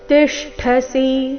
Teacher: ಇಲ್ಲಿ ಟ ಬೇಡ, ಠ ಮಹಾಪ್ರಾಣ ರಸ್ವ